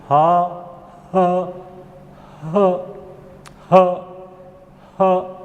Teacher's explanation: درمیانی حلق سے رگڑ کھا کر نکلتی ہے، اور ہا، ہا، ہا، ہا، ہا، ہا ہائے کی ہا کی طرح ہوتی ہے.